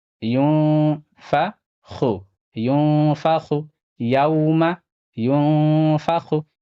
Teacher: یہاں نون ساکن کے بعد فا ہے، فا حروف اخفا میں سے ہے، یہاں پہ بھی اخفا ہوگا